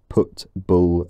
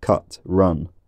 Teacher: pretty much all English dialects maintain a separation between the vowel in put, bull, and the vowel in cut, run, except speakers in Northern England and parts of the Midlands who pronounce them all the same.